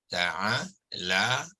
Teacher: La tu kita baca dia sepanjang 2 harakat, ya, sebab dia mat asli tu. Ni alif mat ni.